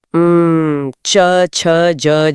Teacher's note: टी यानी तालु जो मुंह के छत का पिछला हिस्सा है। यहां से च वर्ग निकलता है।